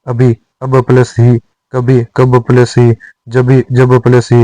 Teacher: पूर्व अल्प प्राण व्यंजन महाप्राण में बदल जाता है और ह का लोप हो जाता है